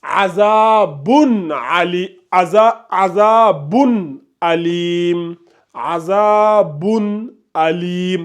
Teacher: comme il y a la hamza qui vient juste après le tanwin, on prononce clairement le tanwin ici